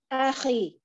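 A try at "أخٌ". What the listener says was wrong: Akhun. Kalau akhi itu pakai ya, pakai ya sukun di belakangnya.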